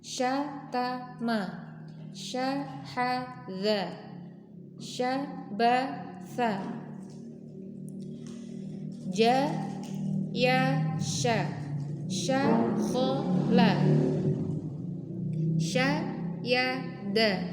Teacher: Hamas, mengalir nafas ya, jelas ya, terasa. Rokhawah, mengalir suara. Kemudian istifal, suaranya tipis ya, atau pangkal lidah di bawah. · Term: huruf shin